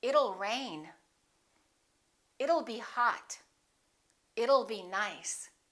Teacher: let's change that t into a fast D and say it'll it'll rain it'll be hot it'll be nice